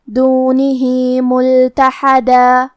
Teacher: کلمت دونہی کے آخر میں ہا کے نیچے کھڑی زیر ہے، یہاں حکم ہے مد صلہ صغرا، ہم اپنی آواز 2 مد کے برابر لمبی کریں گے